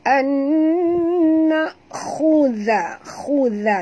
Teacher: Khudha, huruf kha sini tebal walaupun dia dia baris depan, kita kena tebal. Huruf kha ni adalah termasuk dalam huruf isti'la. Isti'la tu dalam bahasa Melayu maknanya tebal.